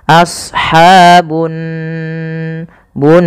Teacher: besar kemudian pelafal anar di sini ada gunah pada lafal Nun cara membacanya yaitu ditahan suara nunnya